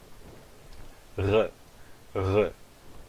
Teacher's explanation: Isto é uma fricativa velar sonora.